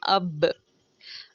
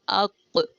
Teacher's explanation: एक एंड पे गूंज की आवाज़, एक कड़क सी आवाज़ आती है, वो हमारा होता है कलकला